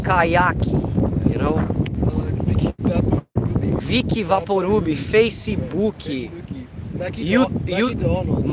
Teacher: So we put vowels at the end of all the words.